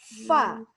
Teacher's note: Fa mengalir, di makhrajnya mengalir dulu.